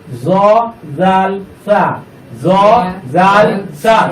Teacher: জিহ্বার আগা সামনের উপরের দুই দাঁতের আগার সঙ্গে লাগাইয়া নরম করে